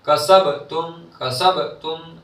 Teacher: बा की आवाज लौटती हुई वापस आएगी